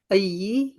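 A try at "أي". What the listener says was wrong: ऐ ऐ, एक दफा समझ लेना, ऐ है ये, अयू नहीं है, अयी नहीं है, तशदीद नहीं है इसके ऊपर, ऐ।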